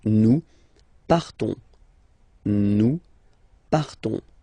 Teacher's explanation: So classic ending ONS, you don't pronounce the S, you just have this on sound nasal.